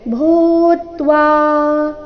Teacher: ಏನಿದೆ ಭೂತ್ವಾ ಭೂ ಮಹಾಪ್ರಾಣ ದೀರ್ಘ